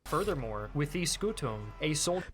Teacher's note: he's fully nasalizing the M, as it should be in classical.